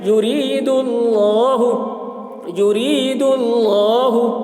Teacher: اللہ کے لام سے پہلے پیش ہے، اس لیے اللہ کے لام کو پر پڑھیں گے. یرید لام کھڑا زبر لا، لام کے اوپر کھڑا زبر ہے، کھڑا زبر برابر ہوتا ہے الف مدہ کے، اس لیے کھڑا زبر کو ایک الف کے برابر کھینچ کر پڑھیں گے.